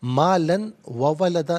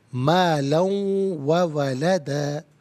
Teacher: مالن میں لام پر دو زبر کی تنوین، اسے واو کے ساتھ ملا کر واو کی آواز کو ادا کیا جائے گا۔ یہاں یرملون کا قاعدہ اپلائی ہوگا، مالن وولدا نہیں، مالا وولدا۔